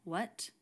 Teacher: it's much more common these days to just do a clean w sound what not the w sound with the little escape of air